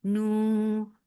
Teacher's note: Nu for dhamma circle lips, make it two counts long.